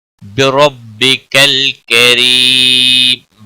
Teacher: را کے اوپر زبر ہے، پر پڑھا جائے گا۔ بکل لام ساکن کو ہلانا نہیں، کری یا مدہ ہے، 1 الف کے برابر کھینچ کر پڑھیں گے، وقف کی صورت میں۔